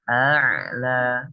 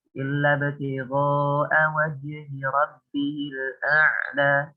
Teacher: kita baca dulu huruf hamzahnya, kemudian baru kita masukkan huruf ainnya